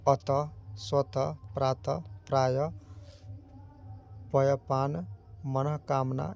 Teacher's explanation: स्वरों के बाद यह विसर्ग चिन्ह का प्रयोग होता है और इसका उच्चारण घोष ध्वनि ह की तरह होता है